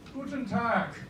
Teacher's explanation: at the end we hear a little K.